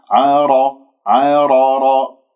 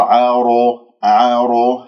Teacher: قرع الراء بدون أن أكور